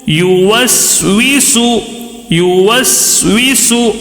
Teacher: سین جب آتا ہے تو آواز میں تھوڑی سیٹی کی آواز آنا ہے